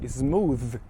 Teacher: a exceção é a palavra Smooth que vai terminar em TH Mas vai ter um th vocálico